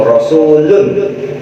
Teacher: lu nya dipanjangin dulu, itu nggak boleh